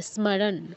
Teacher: ন এর নিচে হসন্ত আছে আমি পুরো নটা বলছি না অর্ধন উচ্চারণ হবে